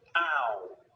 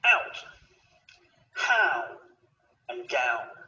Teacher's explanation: This is a connection of a and or oo. Now our mouth is closing and the shape of the lips is changing at the same time, rounding a little as we say the sound. Ow. Starting on the a and finishing on the or oo.